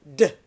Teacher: D is a plosive. It's an alveolar plosive.